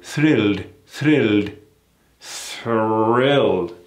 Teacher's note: When you see that R, we never ignore it. We never soften it up like the Brits do.